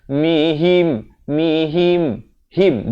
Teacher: Beza him dengan him. Ha baris kasrah bunyi hi. Bukannya bunyi he. Jadi bila bertemu mim.